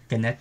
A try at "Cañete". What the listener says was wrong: It's no, in its original form, it had the tilde above the N, so it's with an Enya, so it's Cañete.